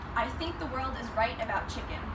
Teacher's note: Words like word become wed, and THs can become a D or a T depending on the word. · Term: Scouse